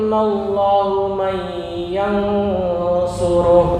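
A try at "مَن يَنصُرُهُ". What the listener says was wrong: Betul. Nah, gitu ya.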